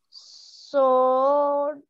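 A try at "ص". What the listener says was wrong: Well done. I love the way you pronounced so. Very nice.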